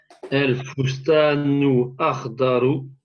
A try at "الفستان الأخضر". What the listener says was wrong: si tu fais la liaison, j'ai pas entendu ton lemme.